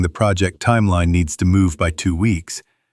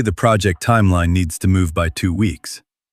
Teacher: You're in a meeting making a point, and instead of saying the project timeline needs to move by 2 weeks, you say the project timeline needs to move by 2 weeks, with your voice rising at the end, turning the period into a question mark · It's called uptalk, and it's the habit of ending statements as if they were questions.